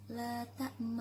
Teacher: Kemudian terdapat bacaan gharib yaitu bacaan ismam la ta'manna, artinya mengkombinasikan harokat fathah dengan harokat dhammah dengan memonyongkan bibir